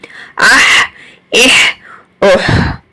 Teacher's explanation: ہا جو ہے مڈل تھروٹ سے ہے اور اس کی بھی آواز رگڑ کر ہی آتی ہے، کیونکہ عین اور ہا دونوں کا ایک ہی مخرج ہے، دونوں کو رگڑ کر آواز نکالنی ہے گلے کو سکویز کر کے.